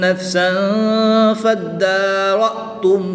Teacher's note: تنوین کے بعد حرف اخفا میں سے حرف فا آ رہا ہے تو یہاں پر اخفا ہوگا، یعنی غنہ کر کے پڑھیں گے۔ حمزہ ساکن کو ہمیشہ جھٹکا دے کر پڑھتے ہیں۔